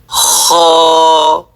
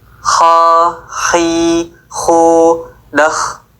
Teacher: Kho diucapkan dari ujung tenggorokan.